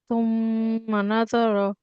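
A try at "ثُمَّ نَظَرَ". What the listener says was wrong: জ, এই উচ্চারণটা হবে না। জ, এটা হচ্ছে ঝায়ের উচ্চারণ। জ, এটা হচ্ছে কি ঝায়ের উচ্চারণ। এই উচ্চারণটা হবে না। আমি যেভাবে বলছি আপনি একটু লক্ষ্য করে সেভাবে উচ্চারণ করার চেষ্টা করুন, দেখবেন সুন্দর হবে।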